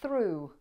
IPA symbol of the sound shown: θru: